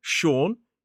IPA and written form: ʃɔːn (Sean)